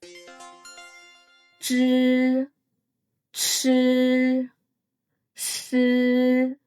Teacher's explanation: These are formed by curling your tongue slightly backward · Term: retroflex sounds